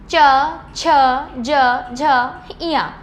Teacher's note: तालु से। जब हमारा जो जीभ है जीभ हमारी ऊपर के तालु को छूती है तो यह वाला च वर्ग बनता है। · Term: तालव्य, तालव्य वर्ग